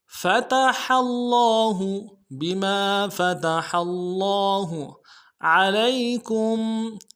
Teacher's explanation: ہا کو گہرائی سے ادا کرنا ہے اور ہا کو لفظ اللہ کی لام کے ساتھ ملانا ہے ، لفظ اللہ کے لام کے اوپر تشدید ہے، زور دیں